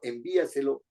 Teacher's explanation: Si yo digo envíaselo, la fuerza de voz en esta sobresdrújula está en I, tiene que tildarse I.